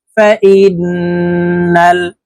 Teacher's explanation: তাসকিদ হইলে অবস্থায় নাকের বাঁশি থেকে গুন্না করিয়া পড়িতে হয় তো আমরা এই হামজা তাশদি নুনের সাথে নাকের বাঁশি থেকে তিন সেকেন্ড পরিমাণ গুন্না করে ধরে রাখবো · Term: ওয়াজিব গুন্না